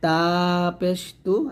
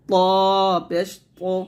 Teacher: জিহ্বার আগা সামনের উপর দুটো গোড়ার সঙ্গে লাগিয়ে আমরা তা এবং ত উচ্চারণ করি, তবে তা পাতলা করে ত মোটা উচ্চারণ করতে হবে